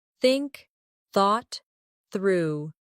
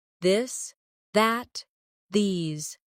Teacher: For example, the the sound in think or this. Put your tongue between your teeth and push air out for think. For this, your tongue touches the same position, but with your voice turned on. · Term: th sound